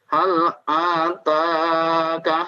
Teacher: Ta-nya 2 harokat. Yang lain pendek. A pendek, kaf pendek.